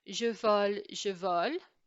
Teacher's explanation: we've got that liaison between the s and the a